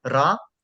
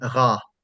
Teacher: with a trilled R, I mean like ra, and with a uvular R, I mean ra